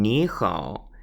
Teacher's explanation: they both have the falling rising tone on their own so when put together the first one is dissimilated to just a rising tone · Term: dissimilation